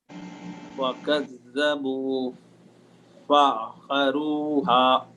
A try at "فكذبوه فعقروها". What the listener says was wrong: فكذبوه فعقروها. There is Dhamma after that. فكذبوه فعقروها. كذبوه فعقروها.